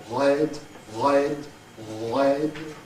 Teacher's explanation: This is a voiced uvular fricative